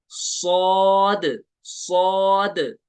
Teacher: इसको पुर पढ़ेंगे और ये हुरूफ सफीरिया में से, और इसको सिटी भी निकालेंगे